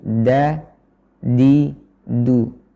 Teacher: Kita ulangi kembali yang tadi telah kita singgung ketika membahas makhraj dal dan ta, yaitu dal dan ta yang sesuai dengan pengucapan lisan Arabi, yaitu dengan menempelkan ujung lidah ke pangkal gigi seri atas, bukan ke langit-langitnya